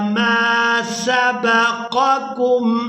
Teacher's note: पहले काफ को पूरा अदा करेंगे और दूसरे काफ को हमने बारीक अदा करना है। दो नुक्तों वाला काफ हमेशा ही पूरा अदा होता है।